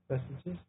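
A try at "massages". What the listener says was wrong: No, not messages. You're still one letter off. It is not silent. You're saying an E. It's an A. Actually, change the two E's in what you said to A's. So instead of ah.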